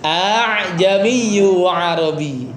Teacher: Aa jamiiyun dua hamzah tuh ya. Tapi biar mudah ya, biar mudah sehingga Hamzah yang keduanya itu dilembutkan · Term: Tashil